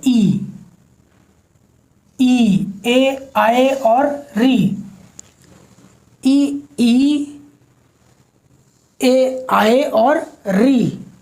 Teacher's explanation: अग्र स्वर यानी वो स्वर जिनके उच्चारण में जीभ का अगला भाग, अग्र यानी अगला, तो अगला भाग उत्थापित होता है।